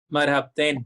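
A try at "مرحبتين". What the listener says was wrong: I heard marabtin. I didn't hear marhabtin. Yeah, again. Marhaba. Marhabtin.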